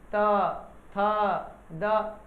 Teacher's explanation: दांत से बोला जाता है, इसीलिए इसको दंत बोला जाता है। बिना दांत के टच से आप बोल ही नहीं सकते।